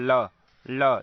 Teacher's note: जीभ आपका जाकर मूर्धा में लग रहा है और वायु दोनों जीभ के किनारे से निकल रहा है, इसीलिए इसे हम पार्श्विक व्यंजन कहते हैं।